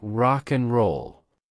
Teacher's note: The word and becomes on or just n instead of rock and roll.